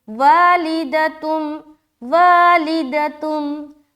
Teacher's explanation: वा में खींच रहे, ली को जल्द अदा कर रहे, दाल को जल्द अदा कर रहे, तुम यहाँ पर क्या पढ़ रहे हैं हम, वालिदतुम।